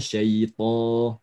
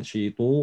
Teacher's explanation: To, syaito, bukan to, ya. To, dibuka saja tapi tanpa mengerucut